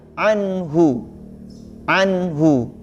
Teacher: Dan hu-nya juga tidak boleh panjang, bukan anhu, ya.